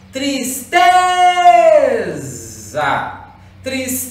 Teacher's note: Então eu tenho uma paroxítona, porque é a penúltima sílaba mais forte